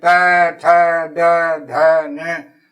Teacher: दांत के जीभ टकरा रही है, इसलिए दंत कहलाएंगे।